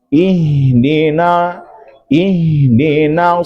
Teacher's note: maka pastikan nun itu dibaca tipis